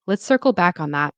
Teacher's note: That's where the stress is. So stress on circle back, circle back, and that. And then there is a falling tone.